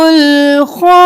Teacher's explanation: خوا زبر الف مد 5 الف کے برابر خوا کو کھینچیں گے